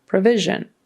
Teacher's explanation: a p we kind of say PR PR and then Vision that Middle s is a zh kind of sound